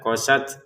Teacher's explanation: Untuk tnya kita letupin nafas sedikit saja.